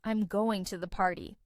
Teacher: Are you coming to the party? Versus a statement, which has a falling intonation